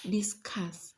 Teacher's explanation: Discuss will fall on the second syllable, it will be a verb.